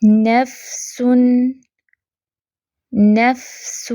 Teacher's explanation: ایک تو نون، فا، سین دونوں تینوں ہی حروف باریک ہیں تو ان کو باریک ہی رکھنا ہے